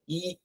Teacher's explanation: ஈ அப்படின்னு சொல்லும்போது நாக்கு வாயோட அடிப்பகுதியில் தான் இருக்கும் அது இன்னும் கொஞ்சம் வந்து உள்பக்கமா சுருங்க பார்க்கும் கான்ட்ராக்ட் நாக்கு வந்து கான்ட்ராக்ட்